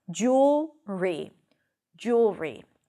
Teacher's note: It's a dark L, so the L sounds a little hollow. It sounds a little bit like a W.